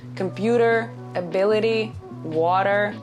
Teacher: If you have T between two vowels, it becomes D sound.